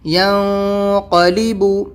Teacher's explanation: نون کی آواز کو ناک میں چھپا کر پڑھنا ہوگا۔ قاف اخفا لیٹر ہے، آپ پیچھے دیکھ سکتے ہیں۔